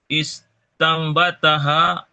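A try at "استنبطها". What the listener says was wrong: Istanbatoha itu huruf to bukan ta. Istanbatoha.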